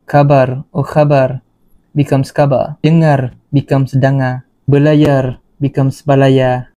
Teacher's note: L and R at the end will be omitted.